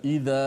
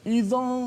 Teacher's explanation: suara itu datang daripada disebut al-jauf, iaitu daripada rongga tekak sampailah rongga mulut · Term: alif mat